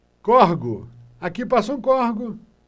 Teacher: a gente transforma a palavra córrego em 3 sílabas em 2 para fazer paroxítona